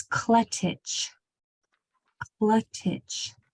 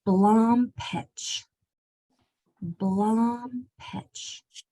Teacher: as a reminder last time we went over the TCH trigraph it sounds like a CH the t is practically silent